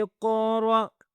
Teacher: یہاں پہ جھٹکے والی آواز ہوگی کیونکہ الف کے اوپر سکون کا سائن ہے